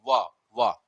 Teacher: दांत और ओष्ठ की सहायता से वा का उच्चारण स्थान है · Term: दंतोष्ठ